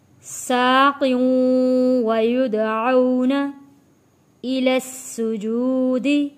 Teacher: سین کے اوپر تشدید ہے، سختی کے ساتھ تھوڑا رک کر سین کو ادا کریں گے۔